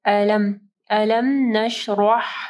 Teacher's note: را کے اوپر زبر ہے، را موٹی پڑی جائے گی. ہا کو واضح پڑھنا ہے گلے کے درمیانی حصے سے